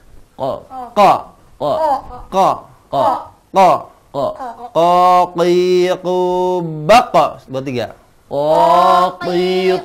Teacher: bunyi bertemu dari pangkal lidah bertemu pangkal langit-langit atas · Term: Qof